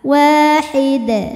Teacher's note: maka Dal ini hukumnya Qalqalah kubra karena ada huruf Qalqalah yaitu Dal yang sukunnya karena berhenti atau disukunkan maka dibaca dalnya dengan pantulan yang besar